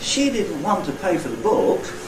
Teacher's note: There are no syllables in front of the first accented syllable. So I don't have a Prehead. · you'll notice that the pitch contour on the nucleus is different from all the others. It goes down and then comes up again.